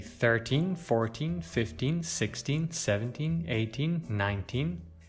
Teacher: When you say 13, 14, 15, 16, 17, 18, 19, you should stress the second of the two syllables. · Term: word stress